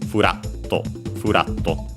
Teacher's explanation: the accent stays on the syllable as a whole, and so on the ra